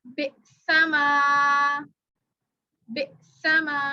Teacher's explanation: خالی الف سے پہلے زبر ہو تو اس کو بھی الف مدہ کہا جاتا ہے, اور اس کو 1 الف کے برابر کھینچتے ہیں. یہ بھی مدہ والا حرف ہے.